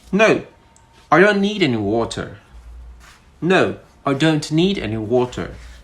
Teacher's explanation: Notice that my voice went down. So when we're making statements that are not questions, simple statements, we use a falling tone.